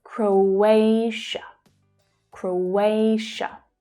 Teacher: Again, the O as in go vowel sound. So the middle syllable is the stressed one here.